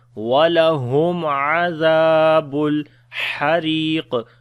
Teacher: Ha we read from the middle of the throat.